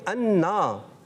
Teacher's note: ایک الف یعنی دو حرکات کی مقدار کھینچ کر ادا کریں گے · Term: الف مدہ